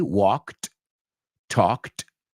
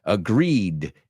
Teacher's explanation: So talked and walked end with a T sound, whereas agreed ends with a D sound